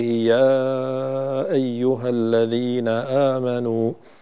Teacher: أن تزيد المد قليلا إلى 4 حركات في المنفصل في قوله يا أيها الذين آمنوا، فالمد هنا جائز منفصل 4 حركات كالمد الذي قبله، وكنت قد قصرته ثم عدت إليه 4 حركات.